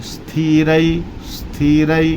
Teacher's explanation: फिर यहां पर नीचे देखें स्थिर स्थिर अब यहां आधा सा है लेकिन आधे स का उच्चारण लोग कुछ लोग अस बोलते हैं कुछ लोग इस बोलते हैं ना अस बोलना है ना इस बोलना है आधा सा बोलना है